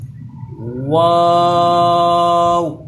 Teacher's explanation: اب یہ جو واو ہے اس کے اوپر مد بھی لگی ہے، اور اس کا مخرج ہوتا ہے دونوں ہونٹوں کی گولائی سے، دونوں ہونٹوں کو گول کر کے شروع میں بھی گول کرنا ہے، آخر پہ بھی گول کرنا ہے، پھر یہ ادا ہوتا ہے۔